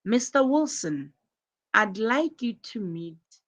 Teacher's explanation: you notice the rising intonation on Mr. Wilson, which is used to address someone